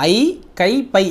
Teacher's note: தனித்து வரும் இடங்களில் தனக்குரிய 2 மாத்திரை அளவில் முழுமையாக ஒலிக்கும்